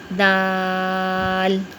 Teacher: دال کو ادا کرتے ہوئے زبان کی نوک سامنے والے دانتوں کی جڑ میں لگے گی